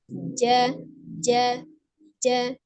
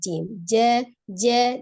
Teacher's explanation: huruf Jim ini secara makhraj atau tempat keluarnya adalah dari tengah lidah yang bertemu dengan langit-langit atas ya jadi tengah lidah bertemu dengan langit-langit atas ini ada warna